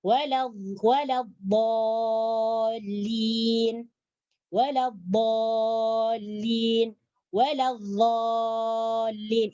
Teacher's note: huruf dhad dia keluar daripada tepi lidah atau sisi lidah, bagian tepi ini menyentuh geraham. Menyentuh geraham atas.